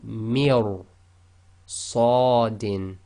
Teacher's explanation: you've got to go straight from the mi, which is empty mouth, directly into ra, which is full mouth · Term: tafkheem